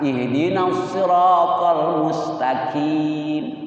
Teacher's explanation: Ada ceklokin sedikit huruf qaf. Jangan menyerupai huruf kaf.